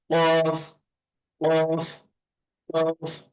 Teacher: কফ এর উচ্চারণটা হবে মোটা এবং গলার মাঝখান থেকে